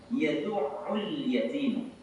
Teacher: Ada alif lam bertemu dengan ya. Maka wajib kita baca alif lamnya karena alif lam qamariah.